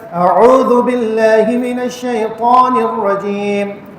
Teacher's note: سب سے بڑا مسئلہ کیا ہے تعوذ کے اندر کہ حمزہ اور عین ساتھ ساتھ آئے ہیں اور دونوں کو الگ الگ حلق کے الگ الگ حصوں سے نکالا جاتا ہے، تو یہ ڈفرینشیٹ کرنا یہ تھوڑا سا مشکل ہوتا ہے۔